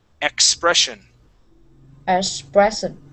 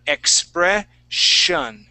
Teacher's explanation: in the middle of the word with the double S, we're going to pronounce that as a sh sound